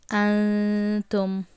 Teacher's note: You must not read Noon clearly. Rather, you should read Noon partially. So only do the nasalization, E, O sound. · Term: Ikhfa